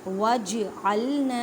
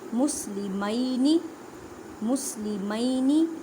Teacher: جیم ساکن ہے, کلکلا کریں. کلکلا کا مطلب ہے ہلا کر پڑھنا